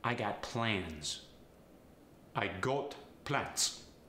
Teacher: the z sound becomes the S sound